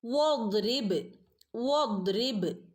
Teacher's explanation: വദ്രിബ്, വദ്രിബ്, ദ്വാദിന് സുക്കൂനുണ്ട്, ഹഫ് സുക്കൂന് കൊടുത്താൽ മതി കേട്ടോ. വദ്രിബ്, ബ കൽക്കലയുടെ ലെറ്ററാണ്, കൽക്കലയുടെ ലെറ്ററായ ബാഇന് നമ്മൾ ഫുള്ള് സുക്കൂന് കൊടുക്കുക കേട്ടോ. ഹാഫ് സുക്കൂന് കൊടുക്കരുത്, കൽക്കലയുടെ ലെറ്റേഴ്സിന് എന്ത് ചെയ്യണം?